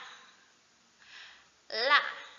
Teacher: Kemudian yang selanjutnya ujung permukaan lidah ditekan ke gusi di atas gigi kapak atau gigi atas bagian tengah. Jadi ujung permukaan lidah itu ditekan ke atas gusi gigi gigi seri atau gigi kapak. Di situ keluarlah makhraj la.